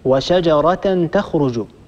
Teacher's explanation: إذا وصلنا هذه الكلمة المنتهية بهاء التأنيث بما بعدها فإننا ننطق هاء التأنيث تاء